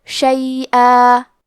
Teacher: اور ہم کلمت شیئا پہ رکے تو تنوین زبر پہ مد الف سے رکیں گے